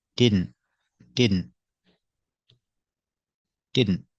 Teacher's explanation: the T at the end is a stop T